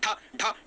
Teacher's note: बहुत झटके के साथ जब जीभ नीचे आती है तालु को छूते हुए, वही उत्क्षिप्त व्यंजन है